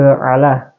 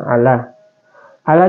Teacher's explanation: Ini huruf lam yang memiliki baris faatah berdiri itu dibaca Dua harakat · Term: Mad tabi